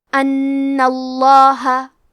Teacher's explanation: ہم لفظ الجلالہ مطلب کلمت اللہ کے لام کو موٹی آواز میں پڑھیں گے